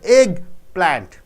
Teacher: Egg is a noun, plant is a noun. Egg is stressed